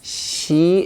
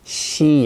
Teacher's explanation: In Korean, your tongue is flat, she, and is creating friction. But in English, your tongue is bent up and going back to the upper part of the mouth is kind of pointing toward the upper part of the mouth, toward the roof of the mouth, as we say. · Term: Korean she